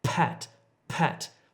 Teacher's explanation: If you're doing it correctly, you should feel the air hit your hand, pat. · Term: aspirated